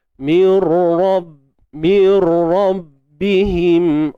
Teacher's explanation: Ra tebal, ra bersabdu, bukan sebab dia bersabdu tapi sebab dia dari atas.